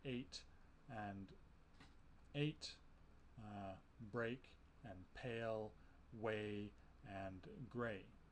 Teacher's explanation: First, we have the A sound, represented by the lowercase e. This represents a mid-front unrounded vowel.